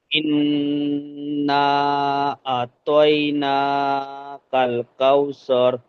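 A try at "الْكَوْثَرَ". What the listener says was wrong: স্বর হচ্ছে এখানে, সার হবে। আপনারটা স্বর হয়ে যাচ্ছে, স হয়ে যাচ্ছে, সার।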